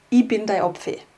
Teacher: das Ich sprechen wir in unserem Dialekt immer als I aus.